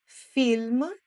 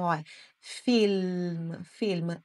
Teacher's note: esse l não tem o som de o tem o som de L mesmo né você coloca a ponta da língua atrás dos seus incisivos dos dentes frontais